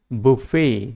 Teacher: এইটো ব্ৰিটিছ ইংলিছ প্ৰনাউন্সিয়েশ্যন হয় এইটো বুফে, আৰু এইটো আমেৰিকান ইংলিছত যিটো স্ট্ৰেছ সেই স্ট্ৰেছটো সেকেন্ড সিলেবলত আহে